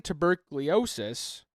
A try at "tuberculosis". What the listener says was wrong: Tuberculosis. You did. You might have added one too.